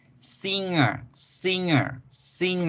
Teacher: haga ese sonido más nasal haga que el aire se vaya ya por la nariz